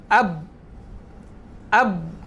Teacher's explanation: Maka dekat situ huruf ba tu kita dapat pastikan tertahannya, ataupun kat situ dah tempat keluarnya huruf ba. Sebab apa? Sebab bersentuhannya kedua bibir. Itu dinamakan makhraj muhaqqaq.